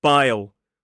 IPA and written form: baɪl (bile)